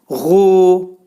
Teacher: bu boğazın yuxarı hissəsindən nədir? Çıxarılır